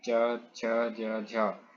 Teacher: च और छ वर्ण का उच्चारण स्थान कौन सा है? तो हो जाएगा तालु। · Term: तालव्य व्यंजन